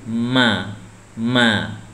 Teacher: Kalau ma di sini sama dengan ba, ya. Bertemu, merapatkan bibir.